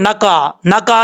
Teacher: جب آپ نقا پڑھیں گے تو قاف کے بعد جو عین ہے یہ اسکپ ہو جائے گا، اس کا مطلب اس کو آپ چھوڑ رہے ہیں، اپنی طرف سے آپ پڑھ رہے ہیں لیکن یہ پڑھا نہیں جا رہا، معنی چینج ہو جاتا ہے، ٹرانسلیشن چینج ہو جاتی ہے.